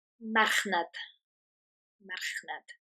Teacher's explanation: again, we've got the rolled R, mar, the CH, nad, as you'd expect